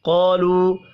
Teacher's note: قالوا، قاف پر پڑھا جائے گا، الف مدہ کو ایک الف کے برابر کھینچ کر پڑھیں گے۔ واو کے اوپر چھوٹی مد ہے، واو کو 3 الف کے برابر کھینچ کر پڑھنا ہے